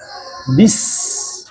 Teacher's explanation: Nah, namun secara istilahnya dia pengucapan huruf yang tajam. Karena ujung lidah kita menempel sama ujung gigi pangkal seri. Nah, makanya dia udaranya itu lewat dengan ujung gigi. Nah, itu yang membuat suara tajam. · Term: sofir